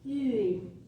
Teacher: ma langue est en avant parce que j'ai un U en premier